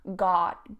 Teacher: Not quite like got, not as rounded as the British. It's slightly more open in that sense. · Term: an o sound